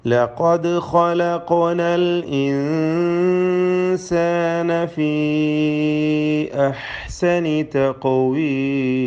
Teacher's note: ഇൻസാനിലെ ഇഖ്ഫാ മണിച്ചുകൊണ്ട് ശ്രദ്ധിക്കണം, അവിടെയും ഇഖ്ഫാ ചെയ്ത് മണിക്കുക, അവ്യക്തമാക്കി മണിച്ചുകൊണ്ട് ഓതുക. ഫീ അഹ്സനി മദ് മുൻഫസിൽ ജായിസ്, ദീർഘം നൽകൽ അനുവദനീയമായ മദ്ദാകുന്നു. തഖവീം ഖാഫിന് ഖൽഖല.